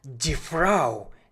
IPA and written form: diː fʁaʊ (die Frau)